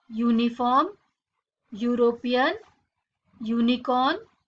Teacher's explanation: All these words begin with the phonic sound U, which is a consonant sound. Hence we say a uniform, a European, a unicorn.